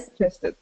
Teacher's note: we kind of close off our that G sound in the back, and then we release into the J sound. So you don't want to take out that G, that first G.